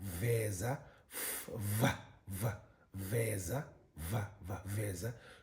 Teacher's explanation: And then you have the slack voice, labiodental, fricative.